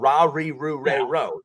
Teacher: Japanese R sound, the ra, ri, ru, re, ro, they do not make that sound. So it's halfway between an R and an L.